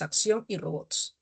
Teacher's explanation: llevan la mayor fuerza de voz en la última sílaba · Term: agudas, agudas u oxítonas